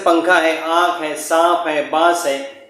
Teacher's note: یہ 15 جو حروف ہیں تا سے لے کر کاف تک کے جو 15 حروف ہے، تنوین یا نون ساکن کے بعد اگر یہ حرف آ گیا تو نون کی آواز کو کیا کریں گے؟ ناک میں چھپا کر پڑھیں گے۔ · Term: اخفا